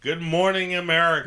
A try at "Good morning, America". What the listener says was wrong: No, with the emphasis. Say good morning, America.